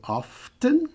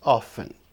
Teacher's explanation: Então, esta é a única palavra dessas 4 cuja pronúncia não altera. Você pode dizer often com o T ou omitir o T e dizer apenas often. Então, as 2 pronúncias estão corretas.